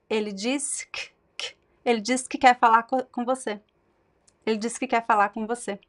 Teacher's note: So you see that I reduced the que to k, and the R's disappear, the final R's.